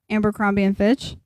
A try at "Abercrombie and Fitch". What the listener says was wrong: Aber. There's no M in there, babe. You're you're throwing M's at me, Abercrombie. Aber.